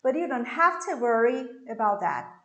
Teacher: i'm going to stress the two verbs and the other words will be unstressed